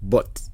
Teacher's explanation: Aspirated just means that there is an extra puff of air after the consonant when it occurs at the start of a word, or the first sound in a stressed syllable. There's also a T sound in the word but, which sounds like an unreleased plosive.